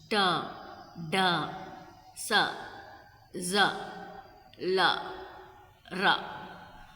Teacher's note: Alveolar, tongue touches the alveolar ridge.